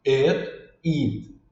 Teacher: Esse EA, ou às vezes pode ser dois Es, e às vezes um próprio I mesmo tem esse som de I, que seria um som mais longo